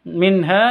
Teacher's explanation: nun mati bertemu dengan ha bacanya jelas Ya terang atau jelas tidak boleh dengung karena bacaan zhar halqi minha hanya panjang dua ketuk karena bacaan